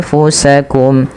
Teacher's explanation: ketika ada nun sukun bertemu dengan ta, maka samarkan nunnya kepada huruf fa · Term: ikhfa